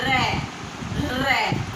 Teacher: जिनके प्रकंपित में जीवा के द्वारा 2 से 3 बार कंपन, जीवा से 2 से 3 बार कंपन होता है, र। आप बोलोगे ना तो 2 से 3 बार जीवा कांपेगी, इसीलिए उसको क्या बोलते हैं, प्रकंपित।